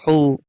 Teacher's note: ہا گلے کے اس حصے سے ادا ہوتی ہے جو سینے کے ساتھ ملی ہوئی ہے، یہ گلے کے درمیانی حصے سے یہ حروف ادا ہوتے ہیں.